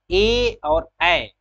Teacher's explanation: ए और ए जो स्वर है वह कंठ और तालु से इसका उच्चारण होता है। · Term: कंठ तालब